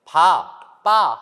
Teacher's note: 두 입술을 네, 이렇게 붙였다가 열죠. 두 입술에서 소리가 난다고 해서 우리가 양순음이라고 합니다.